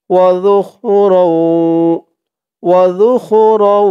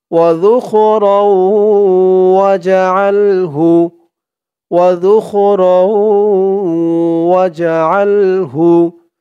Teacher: জিহ্বার মাথা উপরের দাঁতের মাথার সাথে লাগবে জালের উচ্চারণটা করার সময়